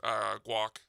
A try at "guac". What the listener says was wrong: He's got a hard G in it. It's walk.